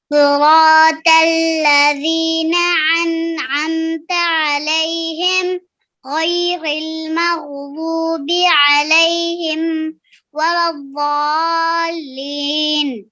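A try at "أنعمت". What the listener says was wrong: جو انعمتا ہے اس میں دونوں کی ساؤنڈ سیم ہو گئی. انعمتا کچھ ایسے کر کے آ گئی.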